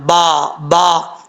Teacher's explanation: یہاں پہ با کا مخرج ہے، دونوں ہونٹوں کا تری والا حصہ ملے گا تو با پڑھا جائے گا، با با. اس چیز کا آپ نے خاص خیال رکھنا ہے.